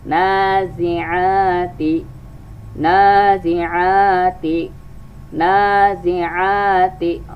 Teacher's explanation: Ini ta berharakat kasrah, ti ya. Ada dua, nun dan ain harus kita baca panjang.